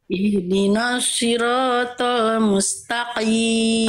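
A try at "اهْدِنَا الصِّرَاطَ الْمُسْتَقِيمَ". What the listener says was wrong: baik huruf tho kurang pangkal lidahnya kurang terasa ya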